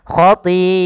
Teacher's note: Maka apabila ada hamzah datang setelah huruf mad, maka ia dinamakan dengan mad wajib muttasil bila hamzahnya pada satu kata. Maka panjangnya kita panjangkan 4 harokat dan tidak boleh dikurangi, karena dia wajib.